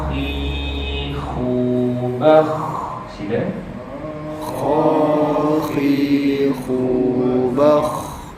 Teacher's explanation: pada baris atas kha dia mesti dibunyikan dengan bunyi yang tafkhim bunyi tebal. Dia tidak boleh bunyi dengan kha kha.